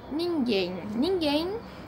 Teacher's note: a última sílaba aí é mais forte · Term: oxítona